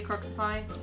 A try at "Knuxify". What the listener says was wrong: Also, it's Knuxify with a silent K. not Knuxify.